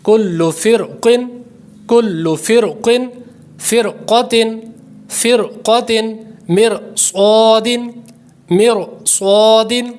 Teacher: یہ سارے را پر ہوں گے کیونکہ حروف مستعلیہ آ رہا ہے